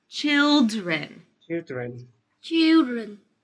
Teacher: I didn't hear the d in the middle.